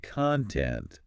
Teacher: stressing the first syllable